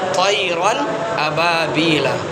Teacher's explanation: اظہار کر کے پڑھیں گے، یعنی ناک میں آواز کو نہیں چھپائیں گے بلکہ آواز کو ظاہر کر کے پڑھیں گے